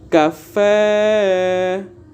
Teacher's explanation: como a tonicidade está no fé ela é oxítona